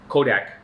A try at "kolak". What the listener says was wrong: It's not a D, it's an L.